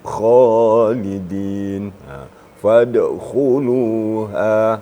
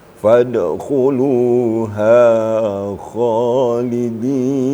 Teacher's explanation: Isti'la itu memang terangkat sekali lidahnya.